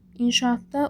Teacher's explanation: İnşaatda uzanma var. A-nın biri düşür, biri uzanır.